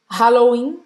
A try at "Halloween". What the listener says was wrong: Halloween. Halloween. A gente não vai pronunciar esse H. Halloween.